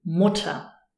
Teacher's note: Mutter has an E-R, but the emphasis is on the U · when you have this combination E-R, then we don't really pronounce the R at all. It's an unemphasized syllable. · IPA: [ˈmʊtɐ]